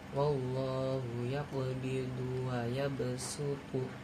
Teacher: Yang pertama ibdal atau mengganti. Cara bacanya menggantikan bunyi huruf shad dengan sin menjadi sin.